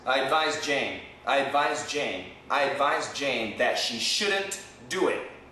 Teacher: In my mind and in my mouth, I said the D, but there's no D sound. You really can't hear the D.